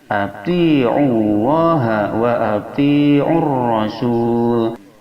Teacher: Alif lamnya alif lam syamsiyah yang wajib idgham dikarenakan alif lam bertemu dengan huruf ra